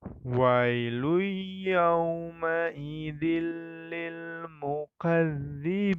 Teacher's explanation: Nah, di situ terdapat hukum bacaan idgham bil gunnah, sama seperti di ayat yang ke-9. Tanwin bertemu dengan huruf ya, maka dibacanya dengan mendengung.